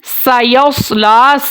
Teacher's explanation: سیصلا، سین کو آپ نے باریک پڑھنا ہے اور سواد کو آپ نے موٹا پڑھنا ہے سٹی کے ساتھ، دونوں سٹی والے حروف ہیں لیکن سین باریک ہے، سواد موٹا ہے۔ لام کے اوپر کھڑی زبر ہے، لام کو 1 الف تک لمبا کیا جائے گا